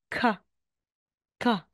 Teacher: initial at middle po aspirated po yan sila Ibig sabihin po may hangin May hangin ung pagkabig Ay sorry May hangin ung pagkabigkas mo